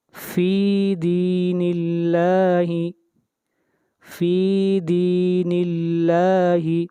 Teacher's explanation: یہاں دیکھیں ہم نے اللہ تعالیٰ کے نام کو باریک پڑھا، اس لیے کہ اللہ کے نام سے پہلے زیر آ رہی ہے، اس لیے اللہ کے نام میں تفخیم نہیں ہوگی، ترقیق ہوگی، یعنی اللہ کے نام کو باریک پڑھا جائے گا۔